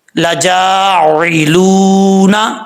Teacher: جیم کے آگے الف ہے، ایک الف کی مقدار لمبا کیا جائے گا